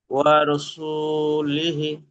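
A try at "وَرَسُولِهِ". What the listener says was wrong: মাশাআল্লাহ, হি টান দেবেন।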